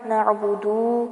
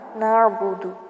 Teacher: دال کو بھی لمبا نہیں کرنا، نعبدو نہیں پڑھنا، نعبد، دال کو جلدی سے پڑھ کے چھوڑ دیں